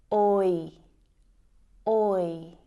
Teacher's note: the oi diphthong sound is actually made up of the o and I vowel sounds. O, I, oi, oi.